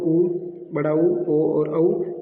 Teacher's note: वर्ताकार जिन्हें बोलने पर हमारे होठों की आकृति वर्ताकार बनती है वे हो जाएंगे वर्ताकार।